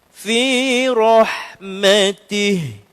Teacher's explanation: Huruf ha tu bergema kan bunyi dia sebab dia ha halqi paling bawah.